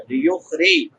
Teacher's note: را کے نیچے زیر ہے، لیخری، را باریک ہوگی